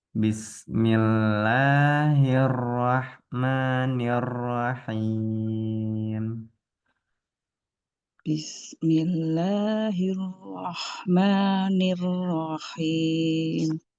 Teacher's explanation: rnya ee tafkhim tebal ya Bu ya Nah tapi tetap getarannya jangan sampai ee hilang nah cukup disamarkan